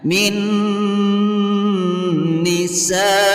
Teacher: Min nisa, sa hukum bacaan mad wajib muttasil karena ada huruf mad yaitu alif yang diawali baris fathah yang bertemu dengan huruf hamzah di dalam satu kalimat. Cara membacanya bunyi sa dipanjangkan sampai 5 harokat.